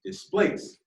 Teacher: In the word displace, the stressed part is place.